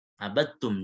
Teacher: dal kata abadtum itu langsung tak. Dalnya udah nggak ada sifatnya lagi. Abadtum. Jadi langsung diidghamkan melebur ya. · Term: idgham kamil